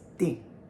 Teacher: But if you're hammering that nail, it's ding, which makes sense, right? A fourth tone is very hard, very harsh, and you're hammering that nail.